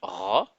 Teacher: Ensuite, pour la lettre Roin, un son guttural très fort, un peu comme si vous gargouilliez la gorge